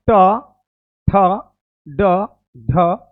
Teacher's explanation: ये मुर्धा से हो रहा है बाबू उच्चारण मुर्धा से और ट वर्गिना है व मुर्धा के साथ नाक से भी